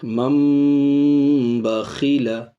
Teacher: تنوین کے بعد با ہے، اس لیے تنوین کے نون کو میم ساکن سے بدل کے پڑھیں گے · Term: اقلاب